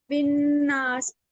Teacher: نون مشدد ہے اور نون پہ ہم غنہ کریں گے، اور الف مد آ رہا ہے تو الف پہ ہم آواز کو لمبا کر کے پڑھیں گے، کھینچ کے پڑھیں گے